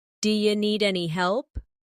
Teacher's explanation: do you sounds like d'ya.